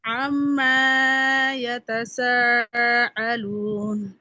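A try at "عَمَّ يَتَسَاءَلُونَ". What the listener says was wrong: আম্মা মিমে টান হবে না। আম্মা ইয়াতাসাআলুন।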